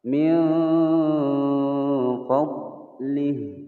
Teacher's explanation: Huruf dod bukan huruf qalqalah, jadi tidak boleh dipantulkan